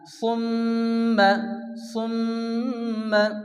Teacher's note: মিমের উপরে কি আছে? তাসদীদ আসছে, তাহলে গুণনা করা ওয়াজিব।